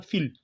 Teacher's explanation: Mais quand il y a al qui suit, donc on ne va plus le tirer. On dit simplement fil.